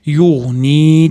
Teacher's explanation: Yug'ni da mana nun-dan keyin yo mad kelyapti, uni ham yug'ni deb bir-ikki deguncha cho'zamiz